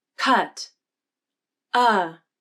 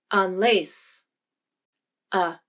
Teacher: even though the stressed uh has more jaw opening the muscles in the mouth are relaxed for both the stressed and unstressed vowels · the right is the unstressed uh in the word on lace notice the difference in jaw drop between the stressed and unstressed positions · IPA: /ʌ/